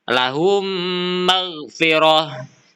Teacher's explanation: Lahum magfirah. Di mana mim sukun bertemu mim sehingga dibaca dengan dengung yang jelas